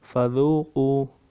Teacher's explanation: واو ساکن سے پہلے پیش ہے، حروف مدہ، ایک الف مقدار لمبا کریں گے